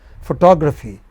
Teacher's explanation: Photography. Four syllables. And again, the second syllable from the beginning is stressed.